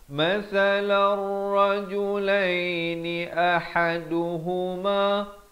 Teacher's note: A di pangkal kerongkong, ha di pertengahan kerongkong